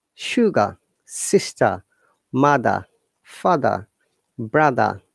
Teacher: Okay, remember the basic difference between the American IP and British IP is that we don't pronounce R in most of the cases. That's why it's called, British English is called non-rhotic.